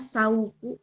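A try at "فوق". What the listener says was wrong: Bukan. Aqsal lisan gini. Fauku. Fauku. Nah, fauku. Aqsal lisan fauku. Ujung lidah bagian atas, jadi bagian pangkal banget ya. Kalau qaf agak belakang, kalau kaf agak sini.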